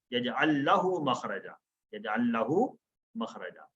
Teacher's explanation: मन यत्तकिल्लाह यजअल लहू, ये यजअल है, यजअल लहू, تو ملا کے پڑھنے کے لیے یہ دو لام آپس میں دو لام کا آپس میں ادغام ہو گیا